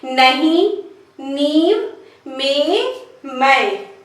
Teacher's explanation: जब शिरोरेखा मात्रा आ रही है तो वहां पर बिंदु के रूप में लिखा जाता है, लेकिन उच्चारण नाक और मुंह दोनों से होता है। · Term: अनुनासिकता